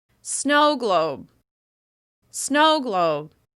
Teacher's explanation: make sure that first syllable is longer, louder, and higher in pitch, with extra clear mouth movement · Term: the first syllable is stressed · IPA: /oʊ/